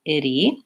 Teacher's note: We tend to use a flap T, sounds a little bit like a D, and we have to go from the lax I to the tense E, itty.